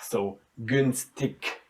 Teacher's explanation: The first G is very distinct and it's very soundy. And the last one, in the very end, again loses its softness and it gets like a K.